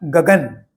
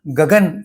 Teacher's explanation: पहला ग मैंने थोड़ा अधिक आवाज में बोला, उदात्त। दूसरा ग मैंने समस्वर में बोला, और तीसरा शब्द अक्षर न मैंने थोड़े हल्के आवाज में बोला। इस प्रकार गगन का उच्चारण करते हुए स्वाभाविक प्रकार से ये 3 प्रकार के उच्चारण अपने आप हो जाते हैं, अगर हम इसकी आदत बना ले।